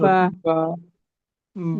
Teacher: ঠিক আছে, বা হলো বা যে দুই দুই ঠোঁটের ভিজা জায়গা হতে উচ্চারিত হয়। বা আমরা যখন উচ্চারণ করবো তখন দুইটা ঠোঁট কিন্তু মিলিত থাকবে।